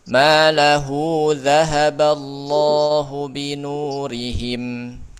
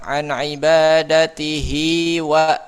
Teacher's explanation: Cara bacanya dipanjangkan dua harakat. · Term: mad silah sugra